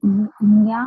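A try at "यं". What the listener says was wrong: Not Nya, but it is not M sound and it is neither G sound. It is ma sound with little bit of G sound. It is young. No, there's a proper way that you pronounce this. So this yam you have to chant, and then how you chant? Through Bijakshara mudra.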